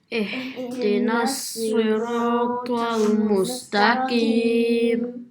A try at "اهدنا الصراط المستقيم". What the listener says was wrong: And try to say the q a bit more. The qim.